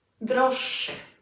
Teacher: imagine that there is a double sh sound in there